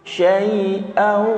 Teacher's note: Ini didengung karena ketemu wawu ya, fathah tanwin ketemu wawu, di sini didengung